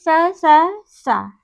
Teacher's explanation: विवार है, श्वास है और अघोष है, ये इतने खर के अंतर्गत आते हैं।